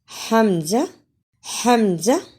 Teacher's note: हमजा हमजा एक अलिफ की मिक के बराबर लंबा करते हैं हमजा अकसा हलक से अदा होता है यानी हलक का वह हिस्सा जो सीने से मिला होता है · حمزہ حمزہ 1 الف کی مقدار کے برابر لمبا کرتے ہیں۔ حمزہ اقصی حلق سے ادا ہوتا ہے یعنی حلق کا وہ حصہ جو سینے سے ملا ہوتا ہے وہاں سے حمزہ ادا ہوتا ہے۔